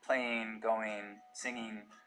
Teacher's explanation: ing endings pronounced as in · All right, so heading west now, over towards the Rockies, you know, one of the things we start to hear in the Mountain West generally is ing endings pronounced as een